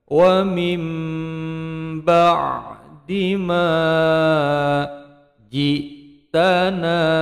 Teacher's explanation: nun sukun bertemu ba berubah menjadi huruf mim. Wa min menjadi wa mim karena berubah menjadi bacaan iklam.